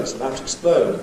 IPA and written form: ɪts əˈbaʊt twɪkˈspləʊd (it’s about to explode)